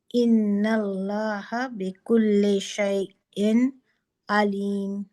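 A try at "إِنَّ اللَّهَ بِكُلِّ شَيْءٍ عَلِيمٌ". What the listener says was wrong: ان اللہ بکل. تو جلدی سے آپ با پہ جائیں نا، تو آپ کا پھر یہ سنگل حرکہ کبھی بھی اسٹریچ نہیں ہوگا انشاءاللہ. اور نون یہاں پر بھی تھوڑا سا اس کو ٹائم دے.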